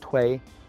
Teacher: So tui, it has the character, it has the pinyin representation, T-U-I, and as part of the pinyin, you get the kind of the representation of what tone that is. So this tui is just going across, tui, so that's a first tone